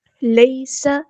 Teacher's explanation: سین کی سیٹی واضح کریں گے، یا لینا ہی نرمی سے موڑیں گے.